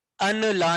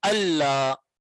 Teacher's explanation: ہم ان لا نہیں پڑھیں گے بلکہ ادغام کر کے اللہ پڑھیں گے